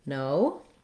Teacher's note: our jaw closes a little bit and our lips and our tongue relax a little bit as we finish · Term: diphthong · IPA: /oʊ/